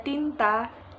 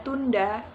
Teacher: Deretan bunyi tersebut mempunyai kesamaan fonetis, yaitu bunyi N, T, dan D sama-sama bunyi dental